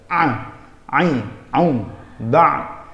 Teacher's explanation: Huruf ain ini cara pengucapannya seperti kayak orang ngeden gitu. Ain, aum, ba ada di tengah-tengah tenggorokan.